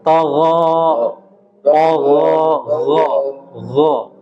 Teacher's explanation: huruf ghain dia huruf yang lemah, huruf rakhawah